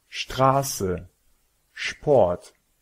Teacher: se si trovano All'inizio di una sillaba la s viene pronunciata come SH